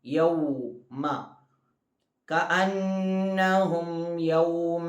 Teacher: ആദ്യം കഅന്നഹും, നൂനിന് ശബ്ദം വന്നു മണിക്കണം. യൗമ, യൗ വാവ് പറയുന്ന സമയത്ത് നമ്മുടെ ചുണ്ടിങ്ങനെ റൗണ്ടാകണം, മുന്നിലേക്ക് കൂർക്കണം